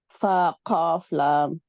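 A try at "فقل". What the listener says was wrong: No cough. Qaw. Akko. Akko.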